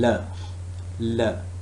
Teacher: the tip of the tongue is touching the alveolar Ridge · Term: lateral